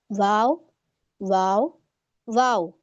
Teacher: चले वाव को देख लेते हैं पहले, दोनों होठों को गोल करना, आप देख रही हैं इस तरीके से आपके गोल होठ होने चाहिए, वाव वाव, ये आसान है, आप जब दोनों होठों को गोल करेंगी तो हमारा वाव अदा हो जाता है, ठीक है। इसमें कोई दांत का किसी तरीके का कोई यूज नहीं हो रहा है, वाव वाव वाव, तो ये हमारा आसान है अल्हम्दुलिल्लाह।